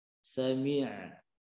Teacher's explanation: huruf ain tekankan ke tenggorokan tengah dengan tidak boleh nekan kuat. Jangan sami'na.